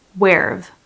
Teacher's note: This is where have you been? But we contract where have and it becomes where've.